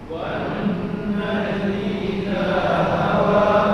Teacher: hawa tu jadi hawe. Itu dia. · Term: iman